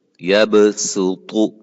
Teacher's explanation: ٹھیک ہے، یبسط، یہاں بھی صاد کے اوپر سین پڑی ہے، یہ بھی رسم الخط کے اندر ہے، ہم اس کو بھی صاد کی بجائے سین پڑھیں گے